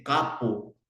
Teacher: no lo emiten la m · en la mayoría a veces de los niños no dicen campo, dice capo, ¿no? Lo omiten la M.